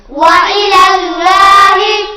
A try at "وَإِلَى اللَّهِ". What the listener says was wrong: اللہ کا لام موٹا، وإلی اللہ